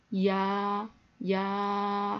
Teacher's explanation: 야, 야 하다 보면 야로 시작했지만 아로 끝나죠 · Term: 이중모음